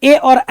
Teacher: अगर आपसे कोई ए और ऐ का उच्चारण स्थान पूछे आप कहोगे कंठ तालव्य होगा।